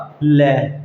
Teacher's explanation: तो जो जीव है वो है तालुके ऊपर ग जाएगी और जो हवा है दोनों तरफ से बाहर आएगी तब इसका उच्चारण होगा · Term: पार्श्विक व्यंजन